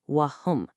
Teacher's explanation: You just pronounce the m sound fully and cleanly, "wa hum", and then you move right onto the next word, "yat lun". No merging, no buzzing, no nasal sound, just "wa hum yat lun", clean. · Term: izhar